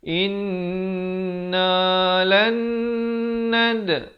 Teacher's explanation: dal diberikan lantunan kerana di sini huruf qalqalah sughra